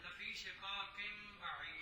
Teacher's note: نون تنوین کو میم کے ساتھ تبدیل کر کے پڑھنا ہے، لفی شقاق بعید۔